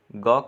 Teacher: ग का उच्चारण स्थान कंठ है